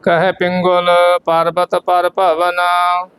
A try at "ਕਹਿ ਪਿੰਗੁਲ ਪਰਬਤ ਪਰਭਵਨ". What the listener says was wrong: ਹਾਂ ਪਿੰਗੁਲ ਗਗੇ ਨੂੰ ਔਕੜ ਲੱਗੀ ਹੈ